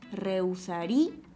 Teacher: el acento no está en la vocal cerrada U, sino está en la cerrada I.